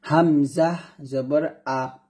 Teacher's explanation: হামজা টা যখন উচ্চারণ করছি আমি গলার শুরু থেকে উচ্চারণ করছি